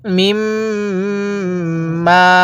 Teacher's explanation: যেখানে মিমের উপরে এরকম তাসদিদ দেখবেন সেখানে মিমটি আপনি নাকের সাথে গুন্নাহ করে পড়বেন।